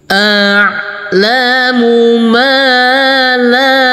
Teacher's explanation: kita kasih Irama Nada datar dengan panjang dua harakat